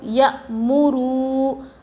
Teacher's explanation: واو جس پر جزم اور اس سے پہلے پیش حروف مدہ تھوڑا کھینچ کر پڑھے